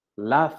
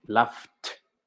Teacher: como es una F el sonido y no vibran las cuerdas vocales, con T, laughed. Wash, no vibran las cuerdas vocales, con T, washed.